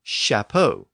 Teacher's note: that CH sound shifted again to an sh sound and that same root Capa produced a later French word Chapo with an sh sound